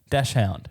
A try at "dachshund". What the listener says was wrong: You're saying, you're saying it without a few letters.